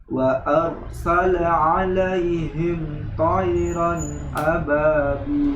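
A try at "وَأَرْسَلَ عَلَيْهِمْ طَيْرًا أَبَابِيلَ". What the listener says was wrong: Wa arsala, lebih tebal lagi. Wa arsala arsala. Kemudian alaihim to juga mempunyai sifat isti'la, yaitu naik pangkal lidahnya tebal. Itbaq juga. Sada ta za, hurufnya ada 4 itbaq. Tayran ya.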